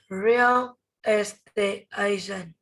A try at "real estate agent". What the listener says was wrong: Okay, good. Next.